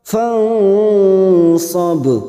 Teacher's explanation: nun sukun bertemu shad ikhfa hakiki, kita samarkan bunyi nun sukun 3 harokat